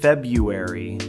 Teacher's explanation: This one has 2 R's in the spelling, February, but almost everyone drops the first one in casual speech. It becomes February instead of February.